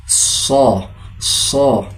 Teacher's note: makharijul hurufnya berada pada ujung lidah bersama lapisan bagian gigi-gigi seri bagian bawah dengan dibaca seperti huruf sin namun lebih tebal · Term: huruf shad